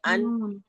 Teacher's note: जबान का किनारा जब ऊपर के चार दांतों के तालू से लगता है या मतलब जड़ से लगता है